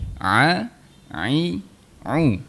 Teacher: Untuk huruf ain di tengah rongga kerongkong.